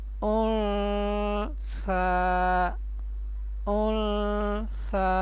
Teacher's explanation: نون ساکن یا تنوین کی آواز ناک میں چھپا کر ایک الف کے برابر پڑھیں گے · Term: اخفاء